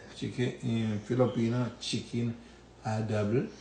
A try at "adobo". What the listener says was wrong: Adobo. Why it sound like you're saying double?